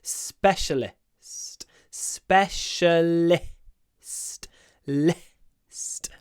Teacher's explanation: Specialist. And this list at the end, the I, it's almost only breath. List. List.